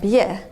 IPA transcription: bje